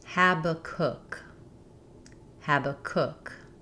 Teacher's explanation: letter A says the A vowel, like in hat, and the final syllable is stressed. It sounds like the word cook or book.